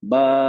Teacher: बा, दो हरकत ना, इसको दो हरकत खींच के पढ़ेंगे, टू काउंट।